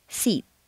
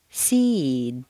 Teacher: the preceding vowel is said more slowly and on a double stair step